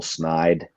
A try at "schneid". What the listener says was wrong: Schneid. You take the CH out of there.